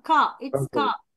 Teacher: அந்த கார் அப்படின்னு சொல்றது வந்து அந்த ஆரை வந்து நாங்க உச்சரிக்க கூடாது. ஆரை நாங்கள் உச்சரிக்க கூடாது. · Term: சைலண்டா